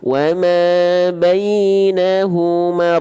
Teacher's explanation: Dia punya sifat yang namanya takrir, bergetar tapi nggak terlampau banyak-banyak.